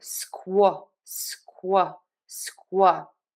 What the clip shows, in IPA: ˈskwɛr ˌbræk.ɪts